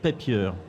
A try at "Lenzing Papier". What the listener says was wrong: Pas vraiment, mais papir, avec l'accent germanique. Autrichien, effectivement.